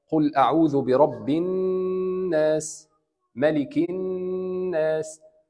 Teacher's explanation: we have to stretch the sound of noon and meme when it comes with shadda on top of it, غنّة, nasal sound, like قُلْ أَعُوذُ بِرَبِّ الناس ملك الناس.